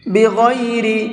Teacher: غین کو منہ بھر کے پڑھیں گے